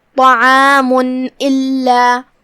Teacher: لام پہ تشدید ہے، 2 حرف کے برابر لام کو پڑھنا ہے